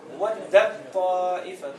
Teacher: التاء والطاء إذا يكونوا مع بعض يدغم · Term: إدغام كامل